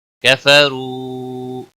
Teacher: را کو موٹا پڑھیں گے، را کے اوپر پیش ہے، واو مدہ ہے، ایک الف کے برابر کھینچ کر پڑھیں گے